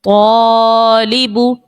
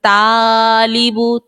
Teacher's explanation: جیسے ہم پڑھتے ہیں طالب، جب طا کو موٹا پڑھا تو الف خود بخود ہی موٹا ہو گیا